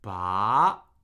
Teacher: The second tone doesn't have that inflection point. The second tone just rises and the second tone ends up where the first tone lives.